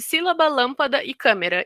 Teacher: Elas têm a sílaba tônica é a antepenúltima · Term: proparoxítonas